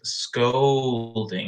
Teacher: scolding I make more of an O sound with scolding